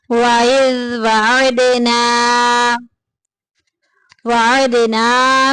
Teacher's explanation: دال کو ہلا کے ذرا نکالنا ہے، کیونکہ دال حروف قلقلہ میں سے ہے